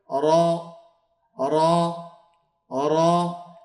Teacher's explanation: জিহ্বার আগার উল্টা পিঠ তার বরাবর উপরের তালুর সঙ্গে লাগাইয়া একটি হরফ উচ্চারণ হয়